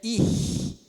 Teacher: É o fricativo plano velar, só que avançado. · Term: velar avançado